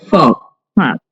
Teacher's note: પ ની પહેલાનો વિસર્ગ આવે એટલે વિસર્ગનો ફચ્ચાર થાય ફા ઓકે બરાબર હ ક્લેબ્યમ માસ્મગમફ પાર્થ ક્લેભયમમાસમગફ પારથ ક્લે નથી